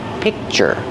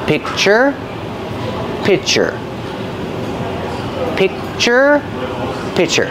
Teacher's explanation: picture but it's a little different when I say pi picture I have the C C Sound but I don't release it so it's a stop sound I stop the air